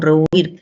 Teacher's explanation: la palabra tiene 2 sílabas, ¿no? Y que el acento recae en la última sílaba